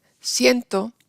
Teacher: En siento, IE, sie, es la sílaba tónica, ahí sí tenemos diptongo